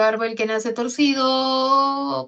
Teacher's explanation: las que tienen inflexión tonal, entonación o tono horizontal son las oraciones interrumpidas o inconclusas